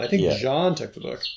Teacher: I'm putting stress on John.